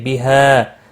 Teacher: وقف کی صورت میں وقف بالابدال ہوگا، دو زبر کو بدل کر ایک زبر کے ساتھ پڑھیں گے. حرف مدہ بنتا ہے، ایک الف کے برابر کھینچ کر وقف کریں گے.